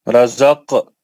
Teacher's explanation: قاف مستعلیہ کا ہے یہ موٹا پڑھیں گے